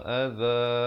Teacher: illa adza, za di ujung lidah. Jangan baca aza, itu jadi huruf zai, ya.